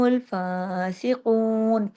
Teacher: قاف کو موٹا کرنا ہے، 2 حرکات کھینچنا ہے واو مدہ کی وجہ سے